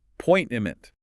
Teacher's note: The emphasis is on the second syllable. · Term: stress